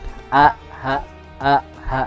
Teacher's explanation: Nah, itu perlu penekanan sedikit, masukkan ke bawah. Paling bawah tenggorokan ha sama dengan makhraj huruf hamzah